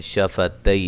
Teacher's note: تی یا لین ہے تو وقف کی صورت میں مد کر سکتے ہیں